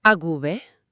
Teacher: como las cuerdas vocales ya se están preparando para vibrar, la boca, por pura economía de esfuerzo, convierte ese diptongo en un sonido fricativo sonoro, la V.